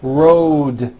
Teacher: Road also has a voiced D ending. Road. It's not wrote, unvoiced, it's road.